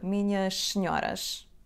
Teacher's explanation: Quando dizemos minhas senhoras, podemos pronunciar só o som sh.